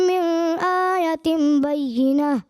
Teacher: मिन आयतिम इजहार करना था, यानी यहाँ पे गुन्ना नहीं करना था, गुन्ना महसूस हुआ